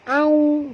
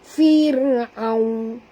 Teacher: Jangan tebal ya. Au, okey, waw sini sifatnya lin lembut. Au, ya, muncungkan mulut sahabat ya.